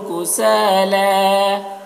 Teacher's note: کسالا سا میں الف مدہ ہے، اسے بھی ایک الف کے برابر کھینچیں گے۔